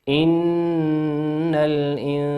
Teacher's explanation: نون ساكن أتى بعدها حرف السين، والسين من حروف الإخفاء